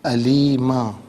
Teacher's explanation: عذاباً علیماً، یہاں وقف کریں گے تو علیما پڑھا جائے گا